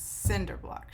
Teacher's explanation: it sounds really emphatic and upsetting because the accent is on the first syllable of both of those words, cinder block, shithole.